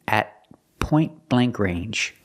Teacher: The T in at is a stop T at point blank range.